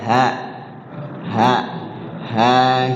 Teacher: Salah satu huruf halqi yang ada di paling bawah tenggorokan ya dekat dengan dada kita